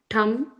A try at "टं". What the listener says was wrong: that tum is just a tum, not thum. First ta tum. Cum, chum, tum, not thum. Okay, just tum, just regular tum.